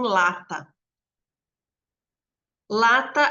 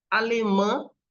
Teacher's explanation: de articulação a gente vai ter a oral e a nasal a oral é que nem em lata lata a gente tem oral né e em alemã o an é nasal